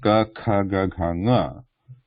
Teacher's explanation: So they have the guttural position, the back of the tongue pressing against the back of the throat